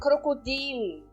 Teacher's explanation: eu sempre dou a entonação no I. Naquela vogal onde tem o I.